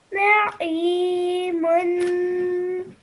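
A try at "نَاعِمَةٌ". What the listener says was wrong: Just be mindful, this ha is a thin one, not her thick one. So just try to read it a bit lightly, not from the middle of the throat, just upper part of the throat.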